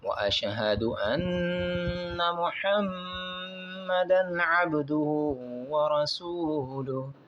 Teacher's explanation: انا اور محمد یہاں پر دو غنے کرنے ہیں اور عبدہ یہاں پر قلقلہ کرنا ہے۔